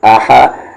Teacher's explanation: اس ہا کا مخرج بیچ والا حلق جو کہ عین کا ہے